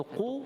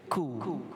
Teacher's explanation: Jadi huruf qaf tebal, huruf kaf nipis.